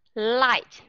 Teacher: chúng ta nghe chỉ có ba âm thôi đó là âm L Long I và âm t